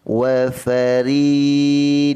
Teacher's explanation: ra ini dinipiskan di samping itu memanjangkan dengan kadar 2 harakat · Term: ra nipis